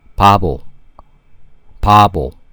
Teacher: because it's in the initial position where the air bursts out for the very first time, it tends to sound like P sound · When this consonant is in the initial position, it sounds like P, but rest of the position, it sounds B